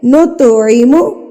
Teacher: تو پہ ہم نے جو ہے قلقلہ کرنا ہے، یعنی کہ اس کو ہلا کے پڑھنا ہے. نط نہیں کرنا، نط پہ آواز کو روکنا نہیں ہے.